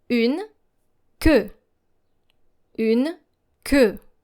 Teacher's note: Now make sure that your E sound is deeper.